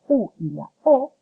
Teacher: La lengua cuando las vamos a pronunciar se retrae hacia la parte posterior de la boca. Por lo tanto, estas vocales se denominan velares o posteriores.